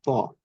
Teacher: তটা তার মতো যেরকম পিওর ত ছিল সেরকম না, একটু মোটা করে ত।